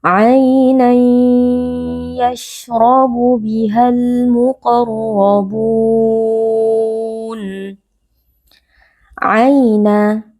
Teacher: ada bacaan lin, yaitu ya sukun yang sebelumnya berharakat fathah. Ya sukun dibaca dengan lunak.